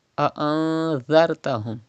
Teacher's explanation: zal is pronounced without whistle